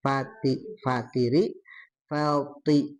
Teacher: Terus yang ee thi kasroh. Nah, tetap ada tebalnya th ya. Bedakan sama ti.